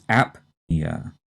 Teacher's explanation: The second term is one that we've heard of before, and here the stress is on the first syllable, and we strongly say the P